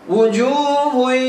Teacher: memasukkan atau meleburkan bacaan dari bacaan yang pertama ini ke huruf selanjutnya dengan cara didengungkan. Jadi bacanya harus dileburkan ke huruf ya ini. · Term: idgham bi gunnah